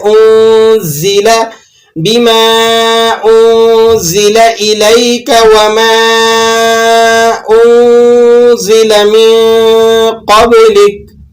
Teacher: انزل، بعض لوگ اس کو انزل پڑھ دیتے ہیں، تو یہ زا ہے، زا کو آپ نے ذرا دانتوں کو بند کر کے اور ذرا اس کو سختی کے ساتھ ادا کرنا ہے